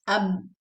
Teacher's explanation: I'm closing my lips, ab, and I'm opening b. So the sound is cutting. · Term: shidda